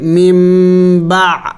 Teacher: نون ساکن کے بعد اور تنوین کے بعد جب با آ جائے تو پھر وہاں ایک چھوٹا سا میم آئے گا، تو پھر ہم اس میم کو پڑھیں گے. نون کو میم سے بدلائیں گے اور تنوین کو بھی میم سے بدلائیں گے. اسے عربی میں اقلاب کہتے ہیں.